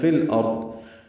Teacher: لام ساکن پہ اظہار قمری ہے، حمزہ کو رو سے ملائیں گے، رو پر پڑھیں گے، ضاد بھی پر پڑھیں گے